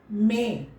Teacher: मुंह से और नाक से भी ध्वनि निकल रहा है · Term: अनुनासिक